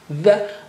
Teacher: the with the tongue tip out, millimeter out